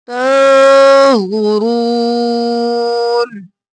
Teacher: نون پر اخفا، زو موٹا رو موٹا